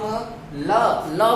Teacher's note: जो श्वास होती है जीभ के दोनों पार्श्व से बाहर निकल कर आती है। जब हम ल बोलते हैं, आप बोलकर देखना, जब हम ल बोलते हैं तो हमारी जीभ ऐसे मुड़कर मूर्धा को टच करती है और जीभ के बीच में एक गैप बन जाता है और वहां से दोनों तरफ से वायु निकलती है। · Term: पार्श्विक व्यंजन